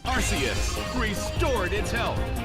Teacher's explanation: this Pokemon's name would be pronounced AR-see-us /'ɑrsiəs/ with a soft C.